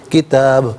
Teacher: اجلن کتاب، یہاں وقف کریں گے تو کتاب پڑھا جائے گا، با ساکن ہوگا تو یہاں قلقلہ کیا جائے گا، یعنی آواز لوٹتی ہوئی محسوس ہوگی